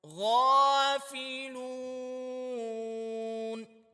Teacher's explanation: واو سے پہلے پیش ہے، تو اس کو واو مدہ کہیں گے، تو اس کو بھی کھینچ کے پڑھنا ہے، تھوڑا لمبا کر کے پڑھنا ہے